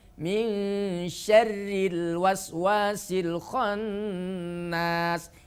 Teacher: ketika ro berharokat kasroh, maka ro berubah sifatnya menjadi tarqiq, yaitu tipis.